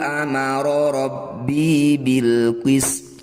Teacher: Ini harus kita sukun jika dibaca berhenti. To sukun maka harus dibaca qalqalah atau memantul.